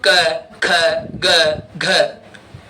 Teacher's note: क बोल के देखो पूरी लाइन बोल के देखो गले से निकलती है।